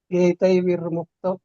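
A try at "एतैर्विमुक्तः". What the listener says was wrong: ವಿರ್ ವಿ ಆದ್ಮೇಲೆ ರ ಬರಂಗಿಲ್ಲ ಪ್ರಭುಜಿ. ವಿ ಕಿಂತ ಮುಂಚೆ ರ ಹೇಳ್ಬೇಕು. ಏತೈರ್ ವಿಮುಕ್ತ.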